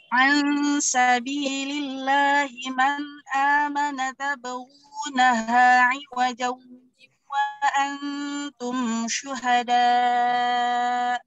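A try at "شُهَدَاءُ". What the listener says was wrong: Kurang naber hamznya syuhada. Jangan nak, jangan di apa di idkhal. Syuhada langsung.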